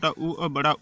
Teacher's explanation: ओष्ठ स्वर जो होता है वो छोटा ऊ और बड़ा ऊ होता है, वो ओष्ठ स्वर होता है